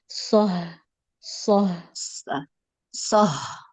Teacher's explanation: Kalau soh itu betul tempatnya. Tapi pita suaranya terlalu lebar. Harusnya dia kebukanya sedikit.